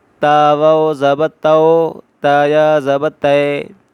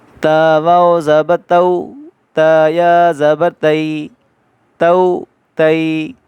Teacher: حرف لین دو ہیں، واو اور یا۔ ان کو کھینچنا نہیں ہے، بغیر کھینچے پڑھیں گے، نرمی سے پڑھیں گے اور مجہول نہیں پڑھیں گے